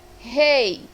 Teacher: tanto a vogal E como a vogal I ficarão na mesma sílaba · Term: ditongo